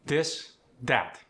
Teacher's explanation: The voiced TH. In words like this and that, it's going to be replaced at the beginning with a D